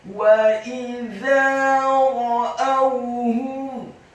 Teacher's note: Wa idza ra'awhum, huruf wawunya dibaca fathah satu harokat, huruf alifnya dibaca tipis kasrah satu harokat, huruf Z-nya dibaca tipis tarqiq, lidahnya agak keluar sedikit fathah dua harokat karena setelahnya ada alif